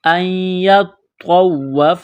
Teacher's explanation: نون کا یا میں ادغام کریں گے، یہاں پر غنہ کریں گے، اس نون کو نہیں پڑھیں گے